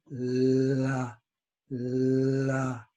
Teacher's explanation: And Japanese want to go d, d. But L, the tongue touches at the T position. And it does not go d. It goes la, la. It's an easy release.